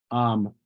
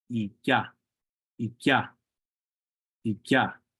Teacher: this K sound, whenever it's followed by an E, it kind of has a bit of a Y sound following it